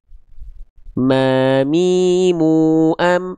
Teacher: Lalu dia juga suaranya masuk ke dalam rongga hidung alias alkhaisyum. Jadi nempelnya makhraj huruf mim itu mulanya itu dari persentuhan bibir atas bibir bawah.